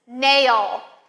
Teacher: Your tongue ends at the top of your mouth. It doesn't come down. It doesn't release. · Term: L at the end